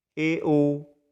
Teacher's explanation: इन स्वरों के उच्चारण में जीवा की ऊंचाई सैवृत से कम रहती है। सैवृत के अंदर जीवा आगे से बहुत ऊपर उठ जाते हैं, इनमें जो ऊंचाई है वो कम हो जाएगी और मुख है वो थोड़ा सा ओपन हो जाएगा, थोड़ा सा खुल जाएगा। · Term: अर्धसैवृत